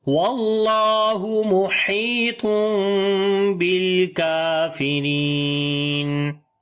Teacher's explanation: تنوین کے بعد با آ گیا تو یہاں پر اقلاب کریں گے، اسی وجہ سے چھوٹا سا میم ہے، اور اخفاء شفوی بھی ہوگا۔